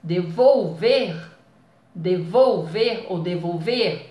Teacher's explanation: o ver é o mais forte